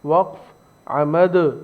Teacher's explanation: دال ساکن پڑھا جائے گا تو دال پر قلقلہ ہوگا